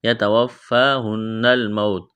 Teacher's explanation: نون مشدد ہے، آواز ناک میں چھپائیں گے